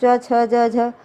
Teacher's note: च छ ज झ, तो हमारा जीभ का जो पिछला बीच का हिस्सा है आगे का वो तालु से टच करता है।